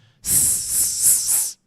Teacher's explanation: An S is an unvoiced sound. You just make that sound with your mouth by blowing. Kind of like whistling.